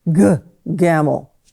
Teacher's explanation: Their tongue is actually scraping the roof of the mouth. When you have the G sound, the tongue scrapes the roof of the mouth.